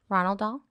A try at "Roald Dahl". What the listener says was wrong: Ronald Dahl is incorrect. It's not Ronald. You have McDonald's on your mind. You said Ronald.